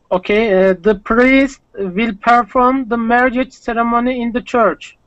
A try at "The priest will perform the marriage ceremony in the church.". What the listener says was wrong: Yeah, perfect.